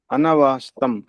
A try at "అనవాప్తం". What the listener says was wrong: స ఉంది తప్పు అనవాప్తం